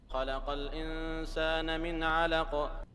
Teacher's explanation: Do you see that the last noon does not have any prolongation? This noon does.